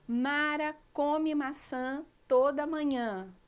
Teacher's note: a letra A mudou de som, que foi o caso da palavra maçã, que o A virou an.